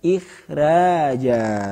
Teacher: Tentu kha-nya di sini tafkhimnya tafkhim nisbi, ya. Bukan demikian ikhraja, tidak, tapi ikhraja.